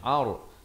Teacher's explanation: ain baris atas bertemu ra yang tanda mati, ini bunyi tebal ra-nya, ar. Jangan baca ar, salah kena baca ar.